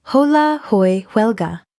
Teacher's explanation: Spanish writes the H and then completely ignores it. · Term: silent H